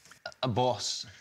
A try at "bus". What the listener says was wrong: Why do you say boss when it's a bus? Don't you say bus?